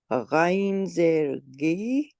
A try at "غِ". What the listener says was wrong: گی نہیں، غی، گی کہیں گے تو وہ گاف ہو جائے گا اردو والا، ٹھیک ہے. غی، غی پیچھے سے،